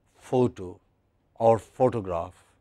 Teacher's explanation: Whether you say photo or you say photograph, it is stressed on the first syllable.